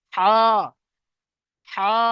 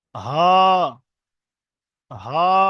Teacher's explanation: বড় হাটা একদম নলির প্রথম ভাগ থেকে উচ্চারণ হবে, ছোট হাটা আমাদের এই নলির শেষ ভাগ থেকে উচ্চারণ হবে, একটু গম্ভীর আওয়াজে